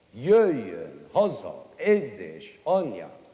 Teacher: I mean, besides the fact that it's got Hungarian words, it's because the Hungarian language has a strange thing about it. Almost all the words in it are accented on the first syllable. · All the stresses belong at the beginning.